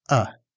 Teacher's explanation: For this sound, your mouth is slightly open, your tongue is in the center, and your face is more relaxed. It sounds like uh. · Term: central relaxed vowel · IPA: /ʌ/